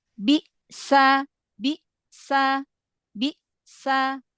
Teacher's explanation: Nah, dia syiddahnya itu benar-benar terkunci, ya, benar-benar terkunci. Jadi suaranya benar-benar berhenti ketika mengucapkan huruf Hamzah yang sukun.